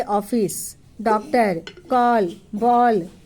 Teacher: यह अ और ओ के बीच की ध्वनि है। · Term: आधा चांद